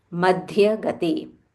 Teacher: you have to stress on it, Madhyagate with aspiration. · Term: Mahaprana